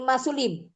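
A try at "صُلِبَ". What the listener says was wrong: Masuliba. Enggak, masuliba dengan fathah. Fu'ila.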